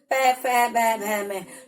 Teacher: प बोलते समय हमारे दोनों लिप्स आपस में स्पर्श हो रहे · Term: ओष्ठ वर्ण